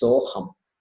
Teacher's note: Same process happens. That visarga drops, then sa becomes so, and then the akara of the aham drops, and therefore it is soham.